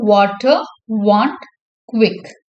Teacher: வா is a voice labio Velar அப்ராக்சிமெண்ட்.